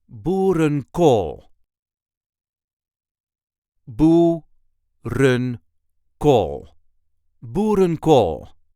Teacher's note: There is a light emphasis on the last part of the word.